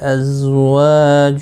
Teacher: الف مدہ ہے، ایک الف کی مقدار کے برابر کھینچ کر پڑھیں گے